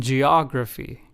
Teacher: For the third word, the emphasis was on the second syllable, og in geography. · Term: word stress